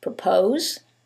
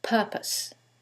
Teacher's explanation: in the first one it's the second syllable that's stressed and in the second one is the first syllable